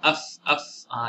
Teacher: fa pun daripada bibir, bibir bawah kena gigi atas